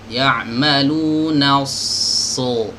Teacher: Ya'maluna so mana desis tajamnya, itu harus dijaga. Ya'maluna so ini harus muncul dan dia harus dialirkan ya, harus dialirkan karena dia memiliki sifat rokhawah dan juga hams ya. Oke, kemudian dibaca tebal, so ya. · huruf sad ini memiliki sifat safir yang desisnya ini terdengar jelas ya. Terkadang ada sebagian kita yang ingin menebalkan ya, tapi malah menggugurkan sifat safirnya.